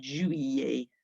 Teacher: So it's not an L sound at all. It's more of a Y sound.